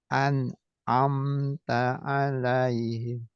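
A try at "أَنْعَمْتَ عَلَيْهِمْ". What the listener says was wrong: Jangan terjeda. Bukan an. Amta. Tapi an'amta. An'amta.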